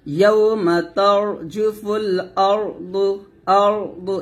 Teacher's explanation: র মোটা হবে, র সাকিন মোটা হবে, দদ মোটা হবে।